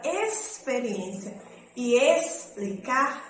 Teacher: Na palavra experiência e explicar, ele tem um som de um S só, né? Tá no finalzinho da primeira sílaba nas duas palavras.